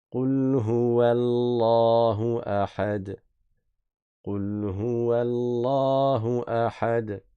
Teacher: Le nom Allah, le lam il est prolongé.